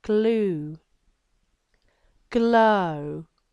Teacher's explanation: the GL is quite tricky because we use the lateral part of the tongue the side of the tongue to produce that g